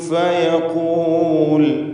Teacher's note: ഫയഖൂലു ഖാഫിന് നിസ്ബിയായ തഫ്ഖീം എടുക്കണം. ഇസ്തിഅലാൻ്റെ അക്ഷരമാണ് എന്നതുകൊണ്ട്.